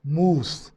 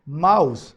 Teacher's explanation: vowel has been changed into ow diphthong that's the combination of two vowels where first vowel glides towards the second